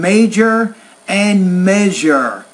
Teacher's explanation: two specific, what we call palatal consonant sounds, the J and the Z, as in major and measure